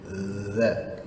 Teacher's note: Huruf zal, ujung lidah keluar sedikit, seakan-akan gigi tu nak menggigitnya.